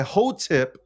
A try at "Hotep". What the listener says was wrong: Hotep, not tip.